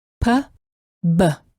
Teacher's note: the lips must be fully together and then parted quickly to produce a small release of air.